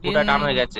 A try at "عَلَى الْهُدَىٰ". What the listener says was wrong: কাপ আলিফ জবর কা টান দিয়ে পড়ে ইন কানা আলাল হুদা হা টান হবে না দালটি টান হবে